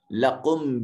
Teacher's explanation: میم ساکن کے بعد با ہے، اخفاء شفوی ہوگا، میم کو اپنے مخرج میں چھپائیں گے